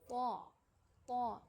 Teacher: پھر طا، یہ بھی اسی مخرج سے ادا ہوتا ہے، لیکن اس کی خاصیت یہ ہے کہ زبان کی جڑ اوپر کے تالو کی طرف اٹھایا جاتا ہے، جس سے آواز میں موٹا پن ہوتا ہے